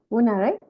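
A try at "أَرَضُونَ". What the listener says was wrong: Una. So una, but put the fatha on ra. Araduna.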